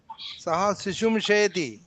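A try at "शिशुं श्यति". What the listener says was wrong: శయతి కాదు, ష్యతి.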